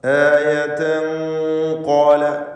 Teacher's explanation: ഇഖ്ഫാ ഹഖീഖി എന്ന ഹുക്മ് അവിടെ വരുന്നതാണ്. തൻവീനിനെ ഖാഫിന് മുമ്പിൽ അവ്യക്തമാക്കി മണിക്കണം. മണിക്കലിൽ തഫ്ഖീം വേണം.